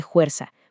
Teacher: con una aspiración profunda que viene directamente del sonido de la F latina original